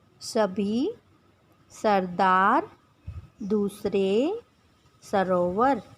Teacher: जब श का उच्चारण करते हैं तब उस समय जीभ मूर्धा का स्पर्श करती है और इसे मूर्धन्य श कहते हैं। दंत्य स, जब वर्ण स का उच्चारण करते हैं तब जीभ दांतों का स्पर्श करती है